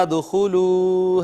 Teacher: دال ساکن آئی ہے، اس پہ قلقلہ کرنا ہے